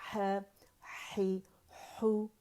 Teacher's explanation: اسے موٹا نہیں کریں گے، زبان کی جڑ نہیں اٹھائیں گے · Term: باریک